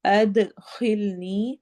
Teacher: دال پہ قلقلہ ہوگا یعنی ایکو ساؤنڈ ہوگی، آواز ہلے گی، ڈبل ہوگی